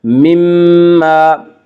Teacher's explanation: یہ مشدد غنہ ہوگا، غنہ کی مقدار 1 الف ہے